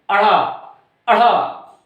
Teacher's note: जुबान आपकी टकरा करके भम से नीचे गिरती, अढ़ा, अढ़ा, है ना, ऊपर से नीचे के तुरंत गिरते हैं, इसलिए इसको उत्क्षिप्त व्यंजन बोलते हैं।